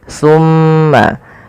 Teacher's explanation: Ketika kita melafalkan tsumma, usahakan kita menahan suara mimnya. Tsumma dan harus hati-hati di dalam melafalkan tsa.